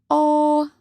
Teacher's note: Terakhir ada fonem O berada di belakang, bentuk bulat dan berbunyi sedang